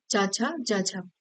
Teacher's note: आदिकालीन हिंदी में ये स्पर्श संघर्षी हो गए और तब से अब तक ये स्पर्श संघर्षी ही है